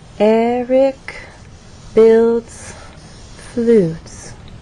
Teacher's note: Eric stresses on the first syllable, builds as one syllable, and flutes receives our main stress. · So there is still a change of pitch because there is word stress, but the overall pattern is falling intonation. So as not to confuse you with all of this up and down, I'm simply going to draw that straight line and then show how our voice falls at the end of the statement on flutes.